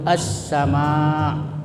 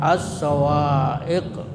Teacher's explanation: Idgham itu memasukkan samsiah itu huruf semacam matahari. Cara membacanya yaitu dengan mengidghamkan atau mentasdidkan pada huruf samsiah sehingga al tidak terbaca lagi meskipun tulisannya ada. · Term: idgham samsiah